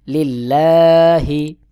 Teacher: লাম জের লিল লাম খাড়া জবর লা হা জের হি লিল্লাহি আল্লাহ শব্দের আগের হরফে জের রয়েছে বারিক করে পড়তে হবে